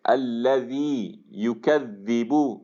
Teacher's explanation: ذال کے کیس میں آپ کی آواز، آپ کی زبان باہر نکل رہی ہے · ذال کے کیس میں جو آپ کی نوکے زبان ہے وہ دانتوں سے نکلے گی باہر